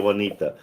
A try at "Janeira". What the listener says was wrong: Cuz you when you say you're R, it sounded like a T before.